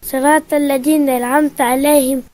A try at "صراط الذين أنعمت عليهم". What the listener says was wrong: Ce n'est pas العمت. العمت non c'est أنعمت حرف النون. أنعمت صراط الذين أنعمت. أنعمت صراط الذين أنعمت عليهم.